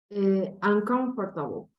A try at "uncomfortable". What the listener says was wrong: The stress now is good, but remember that the O is not going to be pronounced. Okay, so it's going to be uncomfortable. Uncomfortable.